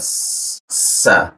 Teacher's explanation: Nah, desis-nya itu posisinya di sini. Dia huruf sa ujung lidah ditempelkan ke belakang gigi bagian bawah dia sa-nya juga kuat ya.